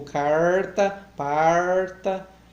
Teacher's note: A pronúncia do R retroflexo, que é comum encontrar realmente.